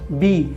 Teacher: बी बोलने के लिए हमें होठों को सटाना पड़ा